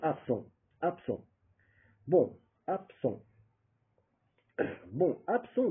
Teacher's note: Le B qui était B, ab, il devient P, n'est-ce pas?